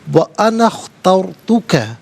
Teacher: وَأَنَا اخترت، انا میں نون پر زبر ہے، اس سے اخترت کی خاء ساکن کے ساتھ ملائیں گے، درمیان میں سے الف یعنی حمزہ کو حذف کیا جائے گا۔ اخترت را ساکن ما قبل تا پر زبر، را ساکن کو پر کر کے پڑھا جائے گا